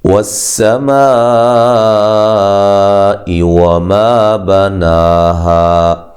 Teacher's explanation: سین کو باریک سیٹی سے ادا کرنا ہے، میم پہ جو مد ہے یہ مد واجب ہے، الف مدہ کے بعد حمزہ اسی کلمہ میں ہے۔